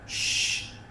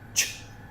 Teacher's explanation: shh, longer, ch, shorter, okay? Try that, shh, ch, okay?